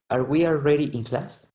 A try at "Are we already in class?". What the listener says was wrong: No, in class. Un poquito más largo, porque es pregunta.